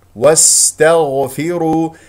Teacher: الراء مفخمه لانها مضمومه نضم الشفتين فيها وفي الواو ولام اسم الجلال الله مفخم لان قبله مضموم مضموم مضموم واستغفر